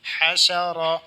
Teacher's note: حسد ح زبر ح شین زبر ش حش را زبر را، را کو زبر ہے پر کر کے پڑھنا ہے